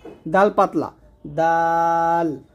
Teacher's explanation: দাল হলো জিহ্বার আগার সামনের উপরে দুই দাঁতের গোড়ার সঙ্গে লাগবে, দাল পাতলা দাল।